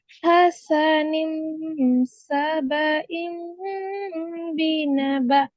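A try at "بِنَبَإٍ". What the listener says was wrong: यहाँ पे ना गुन्ना बढ़ाएं। हसन सबइम बीना बा, बीना बा,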